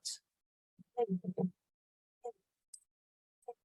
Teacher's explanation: it becomes apparent that there's no initial D sound at all. That's been filled in by the investigator due to the noisy background.